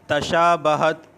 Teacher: شا کو اس وجہ سے کھینچ رہے ہیں کیونکہ الف سے پہلے زبر آیا ہے · رہے ہیں کیونکہ الف سے پہلے زبر آیا ہے، قلو کو، لو کو اس وجہ سے کھینچ رہے ہیں، واو ساکن سے پہلے لام پر پیش آیا ہے